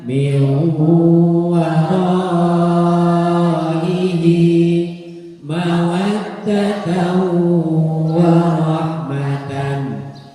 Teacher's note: Nun sukun atau tanwin bertemu waw dibaca dengung, namanya idgham birrunnah.